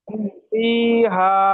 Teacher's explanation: হা একালি টান দিয়ে বলতে হবে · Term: আলিফ মাদ্দা